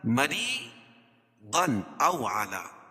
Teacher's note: را کے نیچے زیر ہے تو را باریک پڑھی جائے گی